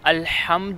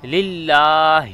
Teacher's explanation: الحمد میں ہا ہے، یہ گلے کے درمیان سے ہوگا۔ للہ یہ جو ہا ہے یہ سینے کے ادھر سے ادا ہوگا